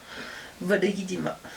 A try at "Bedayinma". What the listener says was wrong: T'as dit Bodoyidi. Non, liaison. Bodoyidma. Bodoyidma. Y'a pas Bodoyidima.